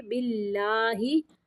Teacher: یہاں پہ اللہ کا لام باریک پڑھیں گے